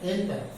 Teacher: stress is on the first syllable